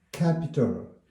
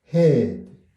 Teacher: 같이 목구멍 뒤에서 나오는 소리인데, 크는 혀 뿌리가 목구멍을 막았다가 터뜨릴 때 나오고, 흐는 목구멍을 다 막지는 않고, 거기서 발음이 새 나오는 소리입니다.